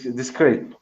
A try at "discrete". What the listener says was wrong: Sí, profe, ahí con un poquito más pronunciada la T, pero sí, discreet.